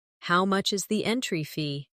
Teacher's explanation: Stress entry fee, so it's clear.